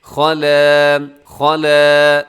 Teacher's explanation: خا موٹا ہے، لام باریک ہے ، خَلَا، اسے خلا نہیں پڑھنا، خلا غلط ہو جائے گا،